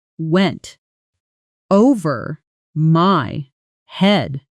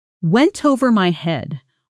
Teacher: In natural fast speech, went over often blends into something closer to went with the t softening and the words connecting almost into one sound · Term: connected speech